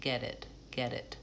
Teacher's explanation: That T becomes more of a flap T or a D, and I'm linking get and it